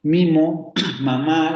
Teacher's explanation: Mimo, mamá, la primera A es una nasal. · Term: nasalización